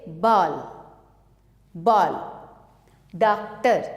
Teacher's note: यह आ तथा ओ के बीच की ध्वनि है।